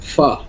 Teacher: 14 নম্বর মাখরাজ, নিচের ঠোঁটের পেট বা ভিজা স্থান সামনের উপরে দুই দাঁতের আগার সঙ্গে লাগিয়ে